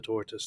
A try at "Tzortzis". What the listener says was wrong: But you keep saying tortoise. I was thinking maybe you can't pronounce that sound, but Germans have that sound.